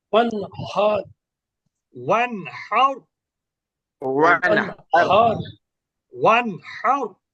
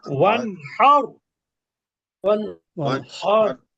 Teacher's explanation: ওয়ানহার হাটা একটু গলার মধ্য থেকে হবে, গলার মাঝখান থেকে।